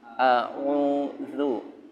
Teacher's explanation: Antara hamzah dengan ain jangan dilebur. Jangan dilebur, pisahkan.